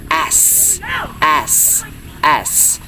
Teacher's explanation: the tongue is positioned near at the roof of our mouth, but without touching it, allowing the air to pass through a narrow gap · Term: S sound